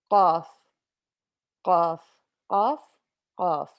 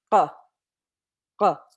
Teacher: And it's kind of like a K, except you have to give it a little bit more oomph. So it goes from the bottom portion of your throat, and you have to give it a K sound from down there. So instead of ka, it's going to say qa, qa.